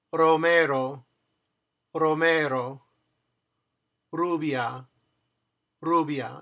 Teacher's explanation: It's pronounced almost like the letter D in English. You tap your tongue to the place where you make the pronounce the letter D very fast. A. It almost sounds like you're saying a da.